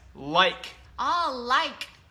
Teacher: cái âm like của thầy bật rất mạnh ở âm k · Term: ending sound K